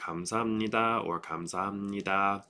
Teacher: Important parts here are that the H sound is softer. It does have a long vowel